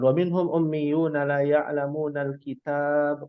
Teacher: Kalau berhenti di dalam kata kitab berarti ba-nya tidak difathahkan, sukun, diwakafkan kitab. Menjadi qalqalah sughra.